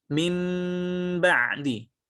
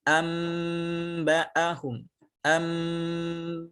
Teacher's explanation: cara membaca dengan iqlab, yakni dengan merubah bunyi nun atau tanwin menjadi mim